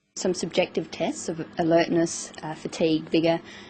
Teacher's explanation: She uses rising and falling tones, and a tone that's neither rising nor falling